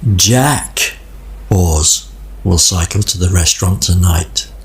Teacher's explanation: the rest of the sentence will cycle to the restaurant tonight is all spoken very quickly but Jack was very slow and meaningful · you can hear that the word Jack has more melody plus it also has a pause after the word